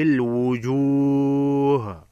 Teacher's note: وقف مطلق ہے، ہا کو ساکن کر کے پڑھیں گے، وقف کر کے۔